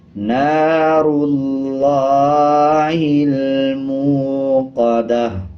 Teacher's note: آگے دیکھیں گول تا ہے، تا کے اوپر پیش ہے، جب وقف کریں گے تو تا ہا میں بدل جائے گا. اسی طرح پیش کو سائلنٹ کر دیں گے اور وقف کرتے ہوئے آدھے ہا کی آواز آئے گی